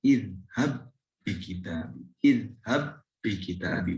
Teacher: Tapi ketika diidghamkan, qalqalahnya menjadi tidak tampak lagi. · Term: Qalqalahnya hilang